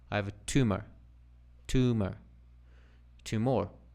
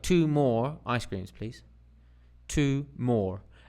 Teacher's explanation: it's got like a little pause in between it there's a little pause between two more it's there's a there's there's the difference because otherwise tumor tumor